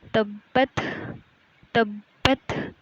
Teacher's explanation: تبت، تبت، اب اس کے اوپر کیونکہ تشدید بھی آ گئی ہے تو اس لیے ہم اس کو زیادہ زور دے کر پڑھیں گے